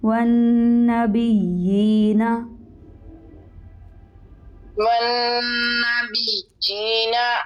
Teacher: جی نون کے اوپر شد ہے, اس کے اوپر غنہ کریں گے. یا کے اوپر شد ہے, اس کو سختی سے پڑھیں گے 2 دفعہ